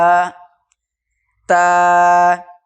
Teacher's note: জিভের আগা এবং সামনের উপরে 2 দাঁতের গোড়ার সাথে লাগিয়ে উচ্চারিত হয় তা